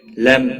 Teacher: میم ساکن کے بعد تا آیا ہے، اس لیے یہاں پر اظہار ہوگا، اس اظہار کو اظہار شفوی کہتے ہیں۔